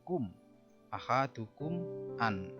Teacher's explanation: Di sini mim sukun ketemu alif. Itu disebut dengan idhar safawi. Jelas di bibir.